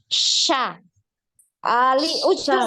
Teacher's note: makhrajnya di tengah lidah Sya ujung lidah ini enggak enggak nyentuh gigi